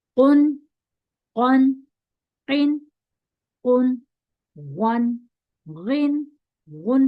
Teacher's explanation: okay, उन, ऑन, इन, उन, वन, गिन, गुन, पूरा नून मुंह में ही अदा कर देंगे, ठीक है, नाक में नहीं ले जाएंगे